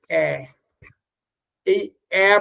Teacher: জীব নিচের দিকে থাকলেও জীবের মাথাটা উপর দিকে উঠে আসে ইসলিয়ে এটাকে লোয়ার মিডিল ভাওয়েল বলে